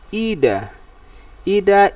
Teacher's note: so the stress fall on the first syllable